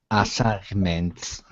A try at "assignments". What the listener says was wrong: I want to hear the N.